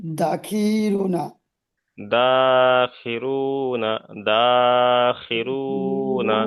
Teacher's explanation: র পেশ রু একালিপ পরিমাণ টান হবে, বাকি কোনো জায়গায় টান হবে না।